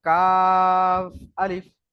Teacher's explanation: আচ্ছা, তারপরে দেখুন কাফ আলিফ। কাফে হচ্ছে 3 আলিফ টান, আর আলিফে কোনো টান নেই।